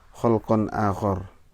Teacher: bacanya khalqa akhor, khornya pendek ya